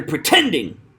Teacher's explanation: He stresses the tend in pretending